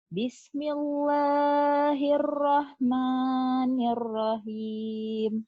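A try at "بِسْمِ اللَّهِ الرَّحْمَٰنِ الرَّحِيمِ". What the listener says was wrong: Jangan dikedalamin. Bismillah, keluarin. Jangan elah gitu.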